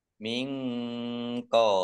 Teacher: nun sukun bertemu dengan huruf qaf, bacaan ikhfa dibaca samar-samar.